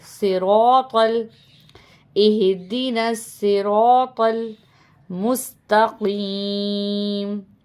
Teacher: را کو بھی موٹا پڑھیں گے اور تو کو بھی موٹا پڑھیں گے